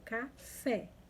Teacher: O acento agudo indica a sílaba tônica, como som aberto